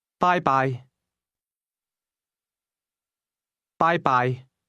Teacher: Did you hear the high and mid-level tones in that word?